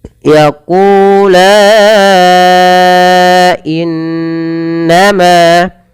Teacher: maka lanya dipanjangkan empat harakat · in tahan suara nunnya, bacaan gunnah. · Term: mad jaiz munfasil